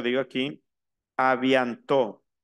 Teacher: avianto la t final no se pronuncia